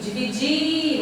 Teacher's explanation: Por que ela é oxítona? Porque a sílaba tônica é a última.